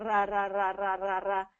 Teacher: your tongue is coming up and touching the roof of your mouth a little bit and creating that rolled sound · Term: rolled R